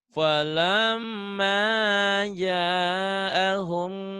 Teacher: humnya bindeng ikhfa safawi ditahan